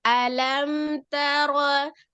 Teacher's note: Jadi dia mengalir karena sifat huruf mimnya itu bukan siddah, bukan roqah.